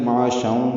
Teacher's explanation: اگر ملا کے پڑھنا ہے تو معاشاؤں میں ادغام ناقص مع الغنہ ہوگا